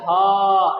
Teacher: ह डायरेक्ट कंठ से आवाज निकल रहा है,